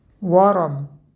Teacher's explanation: Ро с фатхой читается твердо.